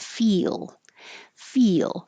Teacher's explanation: your tongue has to rise very high to the E position and then it slides down to the L. That's going to make a kind of accidental Y.